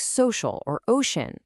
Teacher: that soft s sound has kind of blended with the next vowel to make a shh sound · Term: sh sound